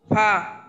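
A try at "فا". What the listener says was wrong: আরো একটু টান। হ্যাঁ, একবারে তো খুব অল্প হয়ে গেল।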